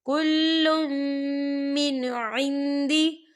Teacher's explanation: کل، لام کے پر تنوین ہے، تنوین کے بعد جو ہے پھر میم آ رہا ہے، اور میم جو ہے حروف یرملون میں سے ہے، تو یہاں پر ادغام ہوگا اور ہم اسے غنے کے ساتھ پڑھیں گے